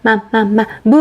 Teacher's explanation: 입술 두 개가 무 발음해보세요. 입술이 닿죠. 그래서 우리 입술을 한자로 바꾸면 입술 순, 그래서 순음이라고 했었고요.